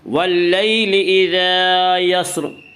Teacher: واللیل اذا یسر الف مدہ، الف مدہ، الف ہمیشہ مدہ ہوتا ہے، الف سے پہلے ہمیشہ زبر ہوتا ہے، الف مدہ کو 1 الف کے برابر کھینچ کر پڑھیں گے